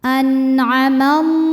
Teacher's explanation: alif lam ini tidak perlu kita baca atau diidghamkan langsung ke lam berikutnya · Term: idgham syamsi